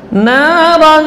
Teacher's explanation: Tanwinnya masih terdengar namun tidak jelas, samar. Naran. Itu masih terdengar bunyi tanwin. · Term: ikhfa